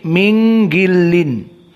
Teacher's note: yang seharusnya izhar nunnya maka diikhfakan